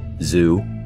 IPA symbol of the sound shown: z